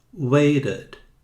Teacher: mas você vai ouvir um americano dizer waited, com D